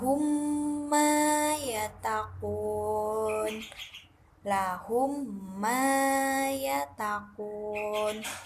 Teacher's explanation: huruf mim yang mempunyai harokat seperti memahamimu jangan Adapun cara membacanya yaitu dengan mendengung makhroj huruf hijaiyah mienya jelas dan mengalun kurang lebih 2-3 harokat